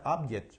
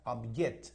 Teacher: funciona como noun también el acento va en la primera sílaba la fuerza del acento va en la primera sílaba